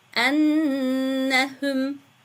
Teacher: Buradaki sakin olan nunu bir miktar gunneliyoruz.